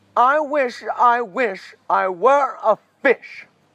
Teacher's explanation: notice how the lack of pauses and breaks gave it a more needy wanting feel